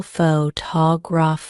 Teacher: take the word photography for example the stress is on the second syllable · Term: word stress